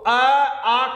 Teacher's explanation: दीजिएगा अगर हम इनके उच्चारण स्थान पर बात कर ले तो अ आ का उच्चारण स्थान है कंठ